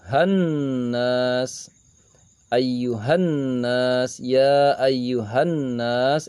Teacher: Ayyuhannas, ayyuhannas, ya ayyuhannas adalah idgham syamsiah. Terdapat alif lam bertemu dengan huruf nun, alif lamnya melebur, samar masuk ke dalam huruf nun.